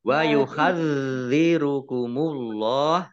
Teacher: Wa yuhadzirukumullah, zalnya dibaca double, ada tasdidnya. Allahnya dibaca tebal karena harokat di depannya dhammah.